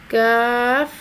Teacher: 3 حرفی آواز 2 گنا کھینچ کر ادا کیا جائے گا، کاف۔ زبان کی جڑ کو کوے کے قریب تالو پر لگا کر باریک آواز میں ادا کیا جائے گا